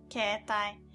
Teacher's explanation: This time, e sound and e sound are next to each other, and we pronounce like e, the long e sound.